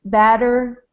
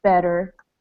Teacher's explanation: we've got to make a difference between batter and better um my mouth is a little more open for this a sound and then a tiny bit more closed for the E in better